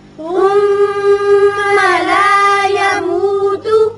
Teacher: میم مشدد ہے، غنہ کیجئے۔